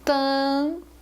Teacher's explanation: Quando eu falo tan, vocês percebem que eu só escuto o som do an e não do m. Eu estou escutando o som vocálico do A nasal, mas eu não estou escutando o som do M.